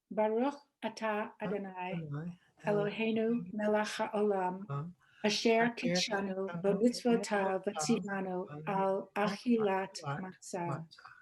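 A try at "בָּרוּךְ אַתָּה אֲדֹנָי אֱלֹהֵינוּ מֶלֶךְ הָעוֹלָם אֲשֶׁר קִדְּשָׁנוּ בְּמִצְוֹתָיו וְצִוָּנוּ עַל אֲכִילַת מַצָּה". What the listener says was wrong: Yes, thank you. Thank you.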